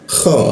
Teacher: kha langsung naik ke atas dia, ke atas jakun dia. Kha ada ngoroknya dia.